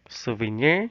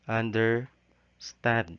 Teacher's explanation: three syllables the first two of which are unstressed and the third of which is stress